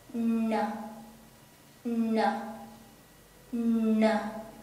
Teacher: when we pronounce n we use the very tip of our tongue the tip of our tongue touch the back of our teeth